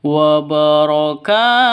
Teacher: tanwin bertemu dengan Ain jelas terang tidak boleh dengung tidak boleh disentak tidak boleh dipanjangkan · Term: izhar